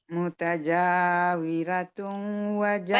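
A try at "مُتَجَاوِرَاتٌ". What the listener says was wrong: Panjang rohnya. 2 harakat. Mutaja harus sama dengan si jim ini.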